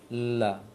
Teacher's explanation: suaranya dia terpecah ke kiri dan kanan lisan karena terhalang oleh lisan yang tersandar ke ujung ke gusi di atas, la. Karena itu inhiraf namanya, bukan makhrajnya berpaling, tapi suara yang berpaling dari makhrajnya.